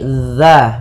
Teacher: Ujung lidah menempel dengan gigi seri atas. Gigi seri atas. sehingga dia pelafalannya terdengar dza bukan za